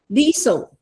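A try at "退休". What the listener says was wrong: No, no, no, no. It's aspirated.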